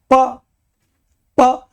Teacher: प बोलो तो होठ पर होठ चपक गए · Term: ओष्ठ